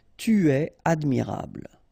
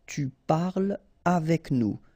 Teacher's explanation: So no liaison here between parle and avec